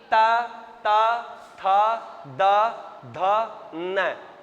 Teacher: touch हो रही है अपनी दांतों पर जीभ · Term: दंत्य